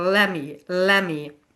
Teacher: So instead of two separate words, let me, very choppy, we just drop the t and blend the sounds together